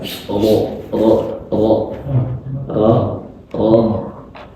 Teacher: Ro ini lebih rendah lagi, lebih bawah lagi, lebih masuk ke dalam daripada huruf nun.